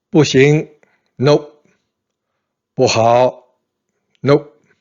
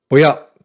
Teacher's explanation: You notice that I used the fourth tone for 不行 and 不好, and I used the second tone for 不要.